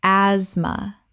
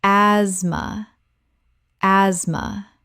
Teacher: The TH is completely silent. This is a 2-syllable word.